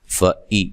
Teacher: حمزہ کو نرم ادا نہیں کرنا، تحقیق سے ادا کرنا ہے، تسہیل سے نہیں پڑھنا